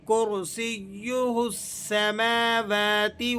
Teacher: سماواتی اس طرح سے پڑھ دیتے ہیں، ایسا درست نہیں ہے. آپ نے میم کو بھی ایک الف کے برابر کھینچنا ہے اور واو کو بھی کھینچ کر ادا کرنا ہے